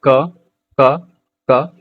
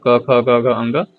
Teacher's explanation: बोलिए आप क यानी कि आप जब बोल रहे हैं तो आप खुद महसूस कीजिएगा। इसका उच्चारण कण से यानी कि गला से इसका उच्चारण हो रहा है।